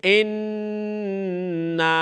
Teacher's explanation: when tashdid comes on noon, you've got to make a ghunna